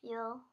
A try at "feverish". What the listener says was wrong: Open syllable E. It doesn't say fe. What does it say? Feverish.